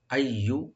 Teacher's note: এখানে মাঝখানে যে ইয়া আছে এটাকে ডাবল করে পড়তে হবে